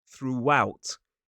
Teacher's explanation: we add a little w sound to make the transition a little bit easier.